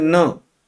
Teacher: न को आप नाक बंद करके नहीं बोल सकते। इसमें मुख से हवा नहीं, इसमें नाक से भी हवा निकलेगी। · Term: अनुनासिक